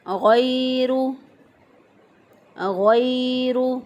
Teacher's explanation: یا غی، یا ساکن سے پہلے والے حرف پر زبر ہے، یا لین ہے، نرمی سے آسانی سے جلدی سے پڑھیں گے، لمبا نہیں کریں گے